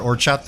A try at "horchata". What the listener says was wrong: You don't pronounce the H. Horchata.